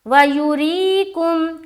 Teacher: آگے چلیں، وَيُرِيكُمْ، واو زبر وا، یا پیش یو، را یا زیر ری، یہاں پر دیکھیں یا ساکن سے پہلے زیر ہے، یہاں پر یا مدہ کا قاعدہ بن رہا ہے، یا مدہ کریں گے، اور ساتھ ہی ساتھ را پر بھی دھیان دیں گے، را کے نیچے کیا ہے، زیر ہے، تو یہاں پر را کو باریک رکھنی ہے۔ وَيُرِيكُمْ، کاف میم پیش کم، تو یہاں پر یا مدہ کیا، را کو باریک رکھا ہم نے، اور کاف میم پیش کم، یہاں پر جزم کا قاعدہ ہوا اور کاف کو میم سے ہم نے ملا دیا۔